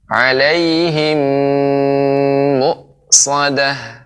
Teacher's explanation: mim mati bertemu dengan mim, namanya idgham mimi atau idgham mislain. Ini lebih panjang